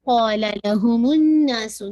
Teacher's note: نون پر آپ کا most complete غنہ ہے, اکمل غنہ آپ نے پورا 2 کاؤنٹ آلموسٹ آپ نے ہولڈ کرنا ہے